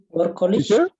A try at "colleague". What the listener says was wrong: Ex-colleagues, not college. College is different. Colleague. That is the person you work with.